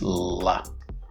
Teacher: if you raise the middle of your tongue and allow air to be released laterally, which means on the sides, you will pronounce la.